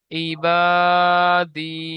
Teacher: এয়া মাদ্দাকে এক আলিফ পরিমাণ টান দিয়ে পড়তে হবে। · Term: ইয়া মাদ্দা